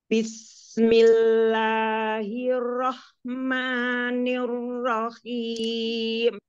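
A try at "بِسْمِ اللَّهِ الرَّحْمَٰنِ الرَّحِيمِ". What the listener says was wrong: huruf lam lamnya jangan keluar lagi lidahnya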